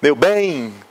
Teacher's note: se uma pessoa gritar, né? Meu bem, só se ouve o E, né? O I é só um apoio secundário.